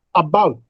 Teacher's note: Now there are two syllables, and bout. Now bout receives greater breath force. Therefore, we say that bout is a stressed syllable.